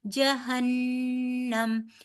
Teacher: نون مشدد ہے، نون مشدد میں نے آپ کو کہا تھا نون مشدد اور میم مشدد پہ گنہ ہوتا ہے، تو یہاں پہ ہم گنہ کریں گے